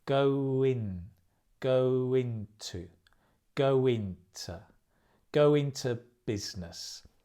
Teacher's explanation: in to becomes inter go into and the stress comes on the business go into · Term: linked